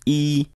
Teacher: a high e contrasts with the low e only in the relative pitch and i do want to stress that this is relative pitch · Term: high tone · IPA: é